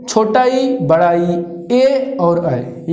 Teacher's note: ऐसा स्वर जिनका उच्चारण जीभ के अगले भाग से होता है, उनको अग्रभाग कहते हैं।